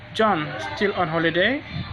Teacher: Said with a rising pitch means it's a question which needs answering. If it's said without a rising intonation, it's information that you already know and you may just need confirmation.